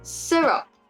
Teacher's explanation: So words like syrup, the stress on the syrup is on the first syllable